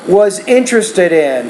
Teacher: take the D at the end of interested and blend it with that preposition in the next word